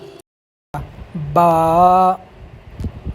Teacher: با کے نکالنے کا طریقہ یہ ہے کہ دونوں ہونٹوں کی تری کا جو حصہ ہے جب ان کو آپس میں ملائیں گے تو با نکلے گا